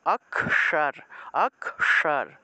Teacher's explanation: জিউভাটা উল্টিয়ে উপরের দিকে মানে মূর্ধাতে নিয়ে স্পর্শ করতে হবে অর্থাৎ জিউভা উল্টিয়ে মূর্ধায় স্পর্শ করে এই স টা উচ্চারণ করতে হয় · তালবস্যর মতো না, কিন্তু মূর্ধন্য স, মূর্ধা দিয়ে উচ্চারণ করতে হবে। হ্যাঁ, মূর্ধন্য স্বর উচ্চারণটা মূর্ধা দিয়ে উচ্চারণ করতে হবে, তাহলে অক্ষর অক্ষর এইভাবে।